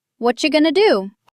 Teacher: And going to becomes gonna. This is called a reduction.